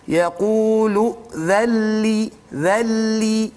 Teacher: Kemudian dzalli, idzalli tu nun sakinah bertumbuh dengan lam, maka kita panggil dia sebagai idgham bila gunnah. Jadi huruf nun itu masuk ke dalam lam secara kamil, secara sempurna, maka tidak bunyi lagi huruf nun dan tidak ada gunnah di situ. Jadi jangan panjang-panjang pula.